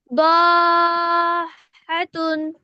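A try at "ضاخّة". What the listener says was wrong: এই, দোয়াদ না তো, ওটা সদ। সখাতুন।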